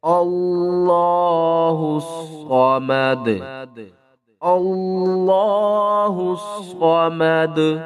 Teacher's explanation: اور وقف کی صورت میں دال کے اوپر قلقلہ کریں گے اور دال کے اوپر جو پیش ہے اس کو ختم کر دیں گے